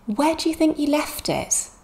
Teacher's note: we're stressing where because it's a question word think because it's a main verb and left because it's a main verb also